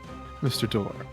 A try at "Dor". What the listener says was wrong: Dor. It's not like you said door. No, Daw.